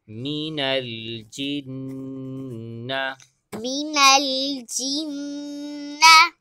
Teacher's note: جیم کے بعد نون مشدد ہے، لہٰذا یہاں پر ہم نے غنہ کرنا ہے۔